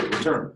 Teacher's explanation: you put the most stress in turn